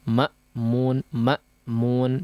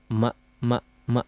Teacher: hamzahnya betul-betul dijelaskan ditekan dengan kuat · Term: pengucapan Hamzah